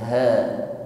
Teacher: sampaikan pada makhrajnya yaitu aqsal halqi, tenggorokan paling bawah.